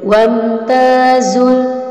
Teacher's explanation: Jadi kalau ada mim mati bertemu huruf selain ba dan mim, maka namanya izhar syafawi. Mimnya jelas dan cepat, tidak boleh dengung. Wamtazul, tidak boleh wamtazul.